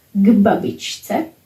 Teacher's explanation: For example, k babičce, to grandmas, k babičce, because b is voiced, k is voiceless, and it is influenced by b, becomes voiced